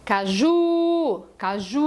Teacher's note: Então eu falo caju, e o U é a tônica, ele tem todo o direito de ser vogal.